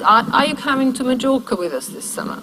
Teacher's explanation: The most stress is on Majorca, and that is also where our pitch movement sits. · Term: most neutral reading